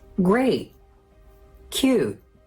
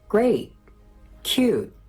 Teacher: The T wasn't in there. It's like I wanted to say it, but then I stopped. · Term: stop T